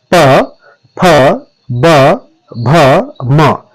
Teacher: ओष्ठ्य ध्वनियों में क्या होता है कि पहले आपके जो होंठ हैं वो आपस में मिलते हैं और फिर खुलते हैं, या कोई अन्य आकार भी ओष्ठ्य ध्वनियों के दौरान जो है होंठों का बन सकता है।